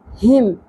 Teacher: ہا اقصا حلق سے ادا ہوگا گہرائی کے ساتھ